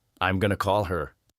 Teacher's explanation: Did you notice how call her almost becomes caller? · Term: connecting words